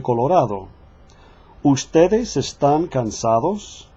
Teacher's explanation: the tongue between the teeth sounds like our th in the word of that so watch for those the latter days between vowels will soften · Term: soft d